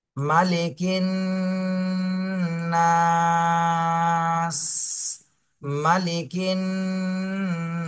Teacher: তাহলে মালি কিন নাস, প্রথমে ওয়াজিব গুণ না করে তারপরে তিন আলিফ টান দিতে হবে, আর লাস্টে সিনে সাকিন দিয়ে পড়তে হবে